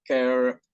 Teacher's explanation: the suffix less preserve the stress of the root word. The stress remains of the first syllable.